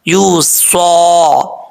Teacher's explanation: وصیہ، یا کے اوپر شد ہے، وصیہ، صاد حروف مستعلیہ میں سے پر پڑھا جائے گا، واؤ کو پڑھتے وقت ہونٹ گول کریں گے، اور یا کے اوپر شد ہے، اس کو ایسا نہیں پڑھنا وصیتی یوسا، وصیتی یوسا، یہاں پر کیونکہ ادغام یرملون ہو رہا ہے ایک الف کی مقدار غنہ بھی کیا جائے گا